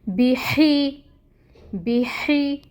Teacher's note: ہا کی ہمس لے کے آئیں گے اور 1 کاؤنٹ پڑھیں گے۔